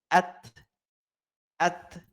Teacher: ketika huruf ta tersebut berharokat sukun, maka suaranya tertahan. Jadi tidak boleh at. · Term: syiddah